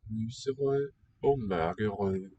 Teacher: Note how weakly these D's are articulated.